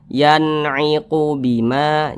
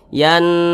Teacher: maka nun sukun berjumpa dengan huruf ain hukumnya adalah izhar halqi karena dia izhar maka dibaca jelas tidak berdengung jadi dibaca pendek saja